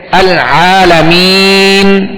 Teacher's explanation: وقف کیا اور آخری متحرک حرف تھا، اس پر وقف کیا اور ہم نے ساکن کر دیا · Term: سکون عارضی